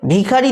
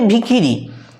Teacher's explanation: প্রথমে উচ্চ তারপরে নিম্ন তারপরে উচ্চ কিন্তু তিনটেই উচ্চ হয়ে গেছে। অর্থাৎ পৃথক পৃথক স্বরধ্বনি একই স্বরধ্বনিতে পরিণত হয়ে গেছে বলে এটাকে স্বরসঙ্গতি বলে। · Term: মধ্য সরসঙ্গতি